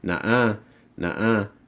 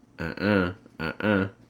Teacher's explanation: You can also take off the N.